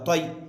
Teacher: یائے لین کو نرم آواز کے ساتھ جلد پڑھیں، معروف پڑھیں، مجہول آواز سے بچیں